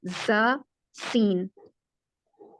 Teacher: زا اور سین یہ دونوں اکٹھے تھے ایک ہی مخرج میں، اور دیکھیں دونوں میں سیٹی کی آواز آ رہی ہے